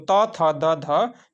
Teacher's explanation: त थ द ध जो होता है दोस्तों दंत व्यंजन होता है